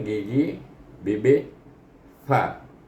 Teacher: Atas keluar huruf fa, iaitu gigi bibir fa. Ada angin sekali keluar.